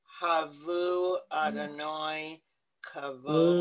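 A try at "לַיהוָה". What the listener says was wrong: Ladonai, la. You have to pronounce the lamed. Because the lamed, okay, the lamed has a meaning there. The lamed, the hey with the slash means Adonai, God. The lamed means two, so it's a claim to God. You know, like, okay, celebrate God. So it's Ladonai.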